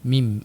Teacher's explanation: Makhraj huruf mim di bahagian bibir >> kita. Makhrajnya di bahagian bibir perlu rapat kedua bibir kita untuk huruf mim.